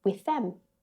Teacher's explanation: Notice how I don't say both THs.